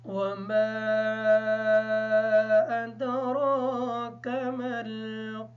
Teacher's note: मीम पर मद होने की वजह से इस मीम को लंबा करके पढ़ेंगे